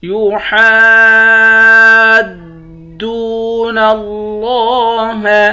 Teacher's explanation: إن الذين يحادون الله ورسوله، نون مشدد پر غنہ کریں گے، ذال کو یا کے ساتھ ملا کر یا کو ایک الف کے برابر کھینچ کر پڑھیں گے. حا کو دال کے ساتھ ملا کر حا کو 5 الف کے برابر کھینچیں گے. حا کے اوپر مد ہے.